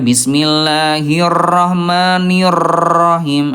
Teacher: huruf r-nya terlalu bergetar ya